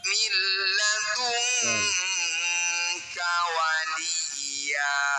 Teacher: Milladunka. Nun sukun bertemu kaf disebut bacaan ikhfa ab'ad. Cara bacanya bunyi nun sukun kita dengungkan 2 harokat.